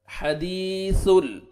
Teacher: جانا چاہیے، حدیثل غلط، حدیثل، سا نرمی سے ادا کریں گے، سامنے والے 2 دانت ہیں ان کے نیچے ٹنگ کو ٹچ کریں گے تو نرمی سے ادا ہوئے گا سا